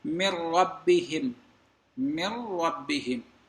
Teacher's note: ادغام تو ہے من ربہم میں، لیکن بالغنہ نہیں ہے، یہ بلا غنہ ہے